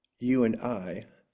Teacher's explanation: An Amphimacer contains two downbeats framing one upbeat